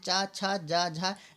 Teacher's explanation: जो पहला और तीसरा होता है वो होते हैं अल्पप्राण, बाकी दूसरा और चौथा जो होता है वो महाप्राण होते हैं।